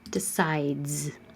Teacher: D is voiced. Keep your voicing on.